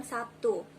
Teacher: Contoh dari asimilasi yaitu kata Sabtu dalam bahasa Indonesia lazim diucapkan Sabtu, yaitu terlihat bunyi B berubah menjadi P sebagai akibat pengaruh bunyi T. Bunyi B yaitu bunyi hambat bersuara, sedangkan bunyi T adalah bunyi hambat tak bersuara.